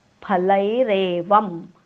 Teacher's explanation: अनुस्वाराच्या पुढे जेव्हा म येतो तेव्हा अनुस्वाराचा उच्चार आपण हलंत म करतो. हलंत म्हणजे पाय मोडलेला.